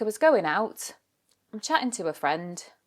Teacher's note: you'll often see the final G is dropped from the end of words. Like I was going out.